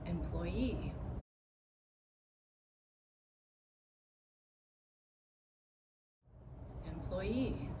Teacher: you heard that I put the stress on the last syllable on the suffix